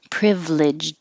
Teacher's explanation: You don't really hear the d at the end.